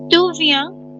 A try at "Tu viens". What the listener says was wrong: No, तू नहीं है. It's Tu.